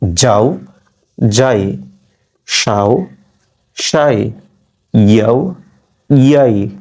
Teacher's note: এই উচ্চারণ করছি আমি তালব্য অংশ থেকে, প্যালাটাল অংশ থেকে